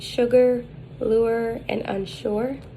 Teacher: the height is high the advancement is back the lips are rounded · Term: upsilon